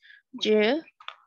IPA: dʒ